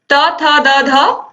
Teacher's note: फिर त था दा धा दंत